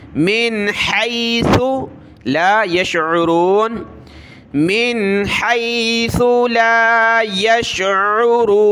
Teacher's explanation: हाया ज़बर है, सा पेश सु, ये सा है, सीटी की आवाज़ नहीं आनी चाहिए